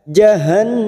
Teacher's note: Ada huruf nun yang bertasdid, gunnah musaddadah, kita dengungkan dan kita tahan selama 3 harokat.